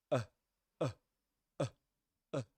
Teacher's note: it's like you stop the sound using your glottis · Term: glottal stop